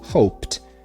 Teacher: no passado eu tenho hoped, que eu escrevo no passado assim, mas ele soa com o som de T